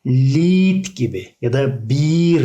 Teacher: I, E, İ'yi uzatıyor. E'yi okumuyoruz arkadaşlar.